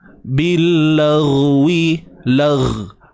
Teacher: Huruf ghain ni jangan tahan suara tuan-puan. Dia ada sifat rakhawah di situ, iaitu suara yang terlepas huruf ghain ni.